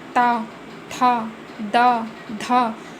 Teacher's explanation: ठीक है, फिर आपका आएगा दंत्य। इनके उच्चारण में जीभ ऊपर के दांतों को छूती है